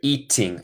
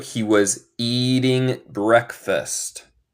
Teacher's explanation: Nota mi acento. Eso es una cosa estadounidense. Yo digo el T más como R.